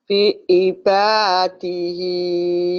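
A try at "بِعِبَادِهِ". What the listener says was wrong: Bukan bu, tapi bi ibadihi. Bukan fi. Kedengaran saya fi. Mungkin ibu maksudnya bi ya. Tapi bibir ibu kurang membuka. Jadi kedengarannya kayak bi ibad. Bi. Padahal bi ibadihi.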